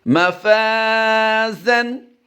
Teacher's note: इस अलिफ को हम फ़ा की वजह से बारीक करेंगे लेकिन अलिफ मा कबल मफ्तू है इसलिए हम यहाँ पर अलिफ मद्दा करेंगे, यानी एक अलिफ लंबा करके पढ़ेंगे।